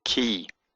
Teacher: when it's followed by a yod, it becomes an e sound, like the I in machine. So it becomes an e sound when followed by a yod.